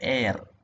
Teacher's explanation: അത് എന്താണ് കുറച്ചുകൂടെ ക്ലോസ്ഡ് വോവൽ ആണ് എവിടെ ജനറൽ ഇന്ത്യൻ ഇംഗ്ലീഷിൽ. Okay, so the GIE equivalent of the RP diphthong air, as in words like share, has a closer vowel as the front element